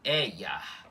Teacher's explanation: Com esse i mais cortado, mais breve, por estar entre vogais